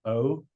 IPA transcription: oʊ